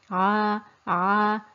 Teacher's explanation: said the letter name was ein the phonetic sound was ah the articulation point is the middle of the throat near the epiglottis area and we can see that the tongue is thin and relaxed